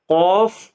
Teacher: कौफ जबान की जड़ और तालु के नरम हिस्से से अदा होता है